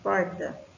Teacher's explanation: constatamos o r retroflexo que aquele r caipira